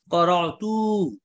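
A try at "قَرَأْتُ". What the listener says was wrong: টান হবে না হ্যাঁ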